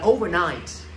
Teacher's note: cái từ này có hai trọng âm, là rơi vào âm tiết thứ nhất và âm tiết thứ ba